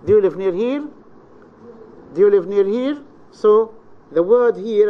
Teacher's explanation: the voice starts low and Rises to a medium pitch okay it starts slow and Rises to a medium pitch this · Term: the low rise